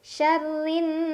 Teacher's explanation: Syarrin, ada gunnah musyaddadah karena ada nun yang bertasydid. Cara bacanya didengungkan, ditahan kurang lebih 2 harokat.